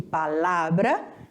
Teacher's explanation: na hora que eu pronuncio, eu percebo que palavra, o lá é o mais forte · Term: sílaba tônica